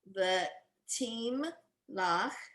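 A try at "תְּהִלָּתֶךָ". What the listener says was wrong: There's an O there.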